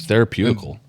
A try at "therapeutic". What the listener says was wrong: Here's the thing, you went far on that one. You made up extra syllables. Yeah, if you just said therapeutic, it would have been fine.